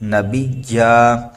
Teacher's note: دو زبر کو ہم الف سے بدل کر پڑھیں گے